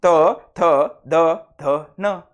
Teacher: जिभेच टोक दाताच्या आतील बाजूला स्पर्श करते म्हणून त्यांना दंतवर्ण म्हणतात